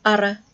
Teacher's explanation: The broad R is pretty much just like the R you use in Australian English, except that you've got to pronounce it at the end of the word, so R. And the double R is more like the trilled or rolled R that you might hear from a Scottish English speaker. So we've got ara for the broad and ara for the double.